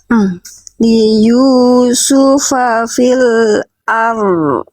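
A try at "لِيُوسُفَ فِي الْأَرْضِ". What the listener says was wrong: Nah, ini masih ar.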